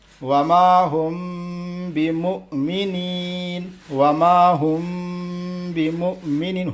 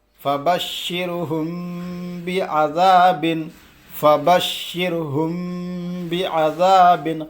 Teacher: میم ساکن کے بعد با آئے تو غنہ کے ساتھ اخفا ہوگا، مطلب غنہ بھی کرنا ہے اخفا بھی کرنا ہے، 2 بار میں آپ کو بتا چکا ہوں، ذہن میں آپ لوگ رکھ لو۔ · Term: اخفاء شفوی